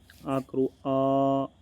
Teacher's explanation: आ के उच्चारण से क्या होता है दोस्तो हमारे मुख का पूरा भाग खुल जाता है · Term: विवृत स्वर